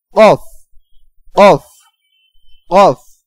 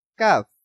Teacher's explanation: আর এই উচ্চারণটা হবে কাফ, অফ, কাফ, অফ, কাফ, অফ, অফ একটু মোটা, এবং কাফ উচ্চারণে পাতলা হবে, অর্থাৎ বারিক হবে।